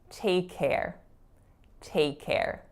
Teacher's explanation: take care with two K's side by side like that so linking would have it so that the K is only produced one time